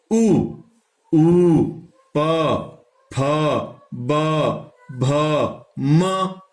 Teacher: ये कहां से बोले जा रहे हैं, होंठ से बोले जा रहे हैं, बिना होंठ के हम इन वर्णों का उच्चारण नहीं कर सकते हैं। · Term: ओष्ठ